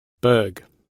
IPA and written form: bɜːɡ (Berg)